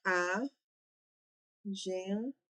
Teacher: Então, ela vai ser uma paroxítona, porque a sílaba tônica é a penúltima sílaba.